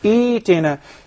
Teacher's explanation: With a mad that measures two counts.